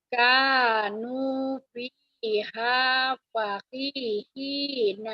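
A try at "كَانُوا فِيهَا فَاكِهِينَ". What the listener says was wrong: Paknya panjang. Kanu fiha fakihina. Ibu latihan panjang pendeknya belum bagus nih ya.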